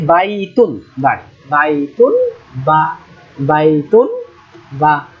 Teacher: মাখরাজ উচ্চারণের জায়গা হল ঠোটের ভিতরের অংশ ঠোটের যে ভিজা অংশ সাধারণত ঠোটটা এক জায়গায় করে বলবেন